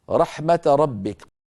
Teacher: رحمة آخرها تاء مفتوحة، والفتحة لا روم فيها ولا إشمام، لذلك يوقف عليها بالسكون فقط